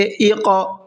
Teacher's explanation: قاف کے اندر تھوڑا سا قلقلہ کریں گے، اقرأ، اس طرح سے آواز کو ہلکا سا ڈبل کریں گے اور را کو پر کر کے پڑھیں گے، اور لاسٹ میں یہ حمزہ ہے، یہ جو الف بنا ہوا ہے، الف تب ہوتا ہے جب وہ بالکل خالی ہو۔